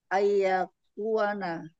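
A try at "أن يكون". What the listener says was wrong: An yakun. Baca jelas saja. An, jangan ai.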